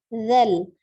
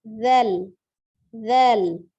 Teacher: huruf zal ujung lidahnya ada di ujung gigi seri bagian atas